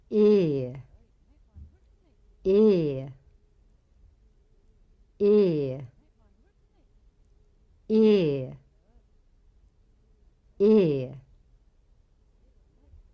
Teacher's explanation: Long E is a pure vowel. It's not the same as the vowel sound in say, day, gray, etc.